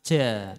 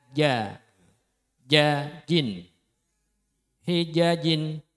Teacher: makhrajnya tengah lidah menempel di langit-langit, jangan ke depan